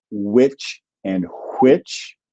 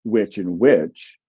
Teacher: If you pronounce those two the same, which and which, then those two sounds are merged for you. If you pronounce them differently, that means you maintain the distinction that was historically there.